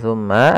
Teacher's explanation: ada bacaan gunah ditahan suara mnya sepanjang dua harakat baru dilepas